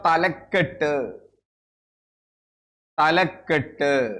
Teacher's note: തല പ്ലസ് കെട്ടാണ് അവിടെ ക ഇരട്ടിച്ചു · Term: ദ്വിത്വസന്ധി